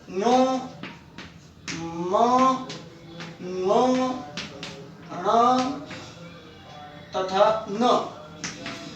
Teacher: ये पांच ध्वनियां हैं जो नासिका यानी नाक की सहायता से बोली जाती हैं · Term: नासिक्य व्यंजन